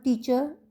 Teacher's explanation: teacher is a two-syllable word with the first syllable louder than the second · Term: word stress